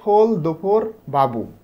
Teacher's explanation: তো হস্যযুক্ত ওয়ার্ড যখন আমরা উচ্চারণ করব এই সময় জিভ একটু উঁচু হয় এবং এটা পেছনের দিকে গিয়ে উঁচু হয় এবং এই সময় ঠোঁট গোল হয়